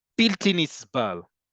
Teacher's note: You get that b, that implosive sound b.